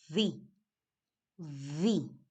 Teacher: In English, the V is fricative. This means that teeth and lips must touch when you say it.